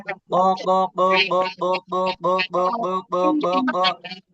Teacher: কাকিকু কাকিকু কাকিকু এটা সহজ এরপরে দেখেন এটা জিহ্বার গোড়া থেকে এটা হলো জিহ্বার গোড়া পুরা ওই থেকে বরাবর উপরের তালু